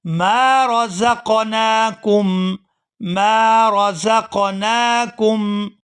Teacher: میم کو الف مدہ کی وجہ سے کھینچ کر ادا کیا جائے گا